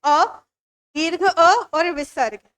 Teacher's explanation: अ दीर्घ अ और विसर्ग यह कंठ से उच्चारित होते हैं